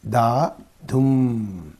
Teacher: da is unstressed Dum is stressed so that that is called one iic foot okay iic foot · Da dum. See, da is unstressed, dum is stressed. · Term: iambic foot